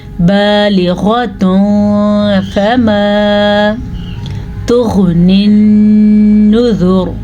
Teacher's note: जब कभी नून साकिन या तनवीन के बाद इनमें से कोई सा भी हर्फ आ जाए तो नून साकिन या तनवीन की आवाज़ को छुपा के पढ़ेंगे और कुछ गुन्ना भी होगा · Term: इख्फा